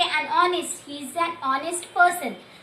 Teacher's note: your H is silent. The consonant sound is silent here, but the vowel sound is there.